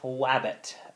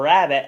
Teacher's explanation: liquids L and R are replaced by a glide, wa or ya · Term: gliding